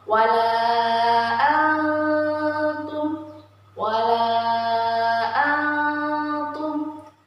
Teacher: Ketika ada nun sukun di situ bertemu dengan huruf ta, maka dibaca samar. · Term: ikhfa hakiki